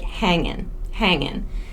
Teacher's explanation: drop the final g sound